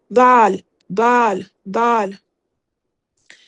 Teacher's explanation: آپ کی جو نوک ہے زبان کی وہ اوپر کی طرف لگے گی اور سیٹی نہیں آئے گی، بالکل نرمی سے